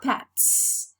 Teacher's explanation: T is voiceless, so s is voiceless too, right? The weak form of the verb to be is realized as a voiceless sound because t is voiceless too.